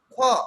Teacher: বাতাসের চাপের একটু বেশি লাগতেছে, আধিক্য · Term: মহাপ্রাণ